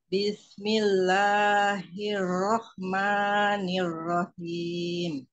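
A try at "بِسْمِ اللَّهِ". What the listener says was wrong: Ujung lidahnya mundurin. Gigi sama giginya boleh rapat, tapi jangan ditekan. Bismillahi. Tajam, biar dia tajam. Ujung lidahnya jangan ke depan. Ke belakang. Mundur, tapi ngambang ya.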